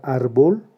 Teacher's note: en la palabra árbol, que tiene dos sílabas, la sílaba tónica es la penúltima. Es una palabra llana, que no termina en N en ese ni vocal, por eso la tildamos.